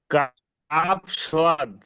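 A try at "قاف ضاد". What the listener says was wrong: কাপ সোয়াদ নয়, কাপ আর দোয়াদ। সোয়াদ হলে উপরে নোক্তা, নোক্তা থাকতো না, সোয়াদ হলে উপরে নোক্তা হবে না। যেহেতু নোক্তা আছে, সেই জন্য এটাকে কি বলতে হবে মোস্তফা ভাই? কাপ আর দোয়াদ, কাপ কাপ।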